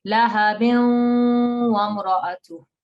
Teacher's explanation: you will get this tanween turning into ghunna.